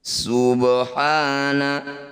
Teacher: Subhana, ba sukun di tengah bacaan disebut bacaan qalqalah sugro. Cara bacanya bunyi ba dipantulkan tapi jangan berlebihan